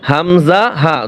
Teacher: হামজা হা এক জায়গা থেকে উচ্চারিত হয় গলার এক জায়গা থেকে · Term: হলকের শুরু